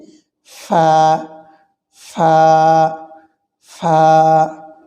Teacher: নিচের ঠোঁটের পেট সামনের উপরে দুই দাঁতের আগার সঙ্গে লাগিয়ে নিচের ঠোঁটের পেট সামনের উপরে দুই দাঁতের আগার সঙ্গে লাগিয়ে ফা